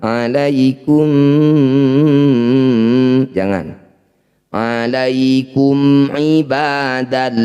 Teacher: Cara bacanya bunyi mim baca dengan jelas ya. Alaikum tidak usah ditahan. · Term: izhar syafawi